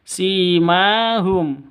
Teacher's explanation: Simahum, si panjang 2 ketukan, ada ya mati diawali dengan kasroh mad asli. Ma panjang 2 ketukan karena ada alif diawali dengan fathah, sama mad asli, panjang 2 ketukan.